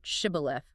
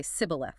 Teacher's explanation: But the Ephraimites had a distinct dialect accent. They literally couldn't make the sh sound. They would say sibboleth.